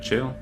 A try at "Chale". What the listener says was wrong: Kale. It's spelled Chale, but it's pronounced Kale.